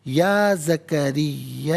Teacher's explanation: Minimum اس کو 3 سے 4 حرکات کی مقدار کھینچ کر پڑھنا چاہیے. میگزیمم اس کو 5 سے 6 حرکات کی مقدار کھینچ کر پڑھ سکتے ہیں. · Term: مد منفصل